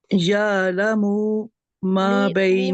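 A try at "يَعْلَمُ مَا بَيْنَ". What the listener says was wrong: میم کو کھینچنا نہیں ہے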